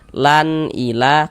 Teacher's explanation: Bunyi nun sukun dan juga bunyi tanwinnya itu dibaca jelas. Kemudian tidak didengungkan, tidak digunahkan, sehingganya kita baca pendek saja. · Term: izhar halqi